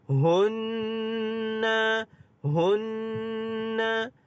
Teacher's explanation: adalah nun yang ada tanda syaddah wajibul ghunnah. Kita dengungkan dua harakat.